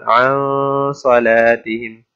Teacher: तो इख्फा का मतलब ये है कि आपने नून साकिन और तनवीन पर गुन्ना करना है, लेकिन उसकी आवाज़ को वाज़ेह नून की तरह नहीं पढ़ना, बल्कि उसकी आवाज़ को कदरे छुपा के पढ़ना है